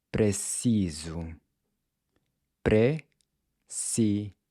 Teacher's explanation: Notice how the “s” is pronounced like a /z/